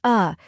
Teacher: a quick neutral sound like the A in sofa